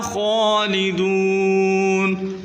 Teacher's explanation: खा को भी मोटा करके पढ़ें।